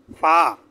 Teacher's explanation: নিচের ঠোঁটের পেট সামনের উপরের দুই দাঁতের আগার সাথে লাগিয়ে